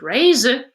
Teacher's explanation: retains its full voice between two vowels the diphthong a and the schwa